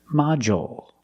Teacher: we use the dark L because it's after a vowel at the end of the word